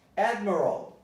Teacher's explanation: Admiral, the stress is on ad.